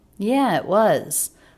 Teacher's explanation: The word it said very quickly, stop T, and then the word was, not reduced here because it's at the end of a sentence, so it's not it was, but rather it was.